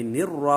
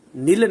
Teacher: لام جو ساکن تھا اس کا را میں جو کہ شمسی حرف ہے اس میں ادغام ہو گیا، اس لیے اب ہم را کو پڑھیں گے، لام کو نہیں پڑھیں گے، نر را پڑھیں گے، نل نہیں پڑھیں گے۔ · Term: ادغام شمسی